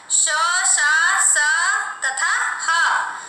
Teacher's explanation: सांस तेजी से निकलती है और गर्म वायु निकलती है, इसलिए इसे ऊष्म व्यंजन कहते हैं। ये 4 हैं, श, श, स तथा ह।